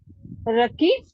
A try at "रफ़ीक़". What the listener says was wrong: रकीब तो अगर होता तो काफ होता वहां, वो तो कुछ और